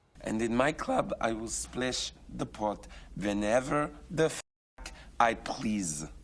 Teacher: what malkovich does here is something that no russian speaker speaking english would actually do which is palatalize everything